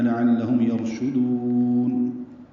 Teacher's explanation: دال کو لمبا کریں گے، وقفاً مد عارض للسکون ہے